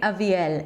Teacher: While in Hebrew it's Aviel, the primary stress is at the end